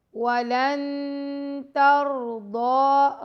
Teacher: را اور ضاد کو ہم موٹا پڑھیں گے · ولن لام کو نون سے ملانا ہے اور نون کے بعد یہاں پہ تا ہے تو یہاں پہ ہم اخفا بھی کریں گے